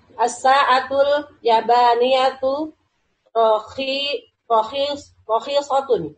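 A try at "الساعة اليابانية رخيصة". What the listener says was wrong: Ya, Ibu bisa panjangkan ya-nya, Bu. As-sa'atul yabaniyatu, begitu bacanya. Ulang lagi.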